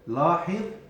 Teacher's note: you can feel the tip of the tongue coming out because that's the dha, that's the letter dha.